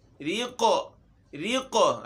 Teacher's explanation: रा बारीक और क़ाफ़ मोटा भी हो और इसमें क़लक़ला भी हो